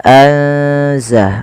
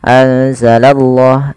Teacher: Karena di sini lafzul jalalah yang didahului dengan huruf fathah atau dhammah, maka dia akan ditebalkan huruf Allahnya